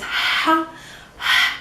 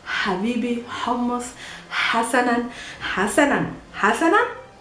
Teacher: Ha is pronounced by pushing air outside of your mouth. Remember, your vocal cords are not vibrating. It's ha. Nothing is vibrating here.